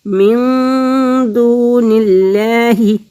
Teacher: تو یہاں پہ اخفا کریں گے، غنہ کریں گے، دو حرکت کے برابر ناک میں آواز کو چھپائیں گے